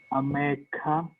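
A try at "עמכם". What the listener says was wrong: Look at the vowel pointing under the I. Look at the vowel. Look at the vowel pointing under the mem. Actually, it's imakem. This is doubled. So imakem.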